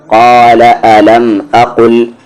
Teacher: اس قاف کو آپ ہیوی کر کے پڑھیں گے، ڈفرینشیٹ کریں گے اس کاف سے